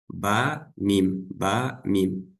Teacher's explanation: у буквы мим и ба одинаковый махрадж. Обе эти буквы произносятся, смыкая обе губы.